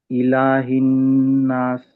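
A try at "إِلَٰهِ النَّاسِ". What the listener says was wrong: కొంచెం లాగాలి ఆపేటప్పుడు, కనీసం 2 హరకాతులు కదా.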